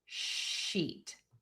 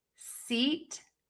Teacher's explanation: the sh sound you have rounded lips and for the s sound you have more smiling lips